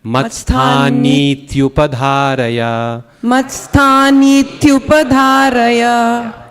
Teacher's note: That last line, matsthanit, it's not a short I, it's a long one.